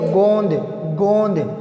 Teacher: मुख और नासिका दोनों से उच्चरित है